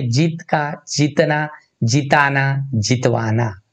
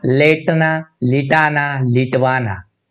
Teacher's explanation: द्वितीय अक्षरी धातु में ए या ओ को छोड़कर दीर्घ स्वर ह्रस्व हो जाता है।